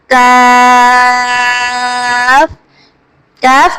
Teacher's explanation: کاف زبان کی جڑ اور تالو کے سخت حصے سے ادا ہوتا ہے۔ کاف، کاف کو ہم باریک پڑھیں گے۔